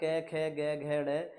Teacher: क वर्ग बोला जाता है सारा क ख ग घ ड यह सभी अपने कंठ से निकल कर आते हैं